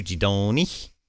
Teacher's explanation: There does seem to be some nasalization. So kind of using your nose, if that makes sense. So from o to on, I guess.